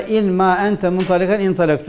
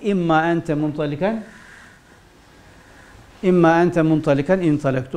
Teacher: nun ile mimin mahreçleri yakın olduğundan dolayı nunu mime kalbettik